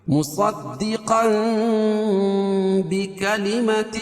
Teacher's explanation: تنوین کو میم سے بدل کر غنہ اور اخفا کے ساتھ پڑھیں گے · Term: اقلاب